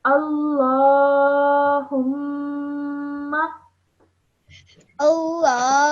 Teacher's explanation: So this is a meme gunna. That's why you produce a nasal sound for 2 seconds.